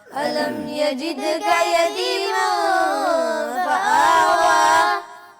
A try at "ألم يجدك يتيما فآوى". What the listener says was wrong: آوا ہونٹ گول کر کے پڑھنا ہے. دوبارہ پڑھیے گا.